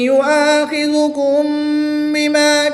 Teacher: الف سے پہلے حمزہ پر زبر ہے تو 1 الف یعنی 2 حرکات کے برابر کھینچ کر پڑھیں گے کیونکہ یہاں پر الف مدہ ہوگا۔ میم ساکن کے بعد حرف با ہے تو یہاں پر اخفاء شفوی ہوگا، غنہ زمانی کر کے پڑھیں گے